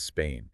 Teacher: But Spain introduces a diphthong, which is a gliding vowel sound, where the A moves into an E sound.